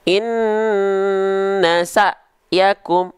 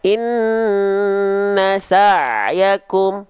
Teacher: Kalau huruf hamzah itu kan dia dilafalkan dari pangkal tenggorokan. Ya, kalau ain nanti dia dilafalkan dari tengah tenggorokan.